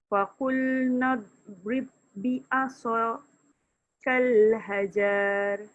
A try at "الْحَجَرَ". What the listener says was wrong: Tak panjang. Sebab hajar tu tidak ada huruf mat.